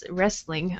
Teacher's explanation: so we don't say the T here, just wrestling